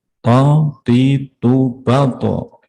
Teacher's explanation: Punggung ujung lidah mengenai pangkal gigi depan atas.